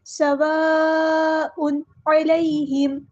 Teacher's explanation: اور یہاں پر مد آ رہی ہے مد متصل، یعنی بڑی مد، کنیکٹڈ مد آ رہی ہے، اس کو 4 to 5 کاؤنٹ یا 4 سے 5 حرکات کے برابر لمبا کرنا ہے۔ سواء، یہاں پر تنوین کی آواز کو واضح ادا کرنا ہے، اظہار ہوگا کیونکہ آگے عین آیا ہے، عین حروف ہلکی میں سے ہے، تو اس لیے ہم یہاں پر تنوین میں اظہار کریں گے۔